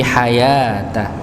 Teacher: Ya, ini dibaca hayata, bukan hayawata, tapi hayata. Ya, ini wawunya sebagai wawu ziyadah saja, tambahan tapi tidak terbaca.